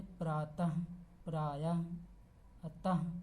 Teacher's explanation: विसर्ग का उच्चारण कंठ से हल्के हा के समान होता है।